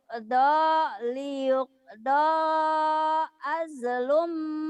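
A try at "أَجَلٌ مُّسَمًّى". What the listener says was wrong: Ajalum, jangan ajlum, itu jimnya hidup. Ajalum. Musamma. Liyuqda ajalum musamma. Liyuqda ajalum musamma. Musamma. Musamma. Liyuqda ajalum musamma.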